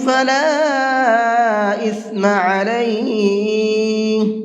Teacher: فلا کے الف کے اوپر یہ چھوٹا مد ہے، اس مد کو 1 سے 3 الف کے برابر کھینچ کر کے پڑھیں گے